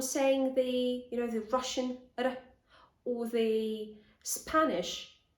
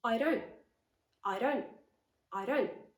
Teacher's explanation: i'm just tapping my tongue on the alveolar ridge very quickly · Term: tap d